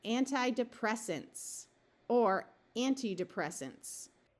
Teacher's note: this A in the last syllable is likely to schwa rather than be a clear short A sound